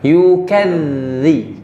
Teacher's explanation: Kemudian masukkan ke dzal. Di dzal itu ada sifat dharkhawa, jadi dialirkan.